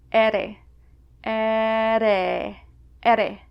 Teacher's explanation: But between vowels, a Basque R sounds somewhere between an English R and an English D. It's just a slight tap to the top of your mouth.